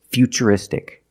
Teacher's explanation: we see t-u-r-i in futuristic again the t is pronounced with the CH sound